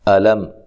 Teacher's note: حمزہ کو تحقیق کے ساتھ پڑھنا ہے، لام کو باریک پڑھنا ہے، لام کو موٹا نہیں کرنا، لام کو لمبا بھی نہیں کرنا۔